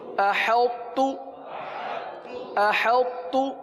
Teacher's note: ساکن حرف کو ملا دیا جاتا ہے ساکن حرف کو مشدد میں ملا دیا جاتا ہے